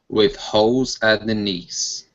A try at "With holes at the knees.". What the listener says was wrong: So you're saying holes. So you're pronouncing an ooh. Hole. Okay, so when you pronounce that L, hole.